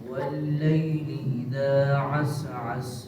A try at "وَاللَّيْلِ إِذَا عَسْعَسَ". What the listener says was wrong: یہاں پہ غلطی ہوتی ہے، سین کی آواز کو ہلا دیا جاتا ہے، سین میں قلقلہ ہو جاتا ہے، ٹھیک ہے، جلدی جلدی پڑھتے ہوئے کیا ہو جاتا ہے، سین میں قلقلہ، اس سے بچنا ہے۔ عس عس عس عس، ٹھیک ہے، عس عس نہیں کرنا، سین کو ہلانا۔ واللیل اذا عس عس، جی پڑھیں، سارے پڑھیں جی آگے